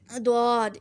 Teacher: زواد کا مخرج کیا ہے کہ زبان کی کروٹ اور اوپر کی 5 داڑیں